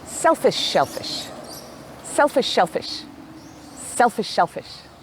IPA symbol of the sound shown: ʃ